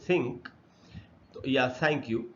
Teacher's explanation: T H से जब थ बनता है, जैसे थिंक तो या थैंक यू, तब वो अनवॉइस्ड होता है